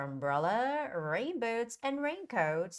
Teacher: umbrella has a second syllable stress rain boots has the first syllable stress and raincoat also has the first syllable